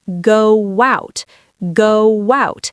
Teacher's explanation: Ends in O. Round lips starts with vowel. Your mouth naturally wants to make a W shape to move between them. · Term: ghost W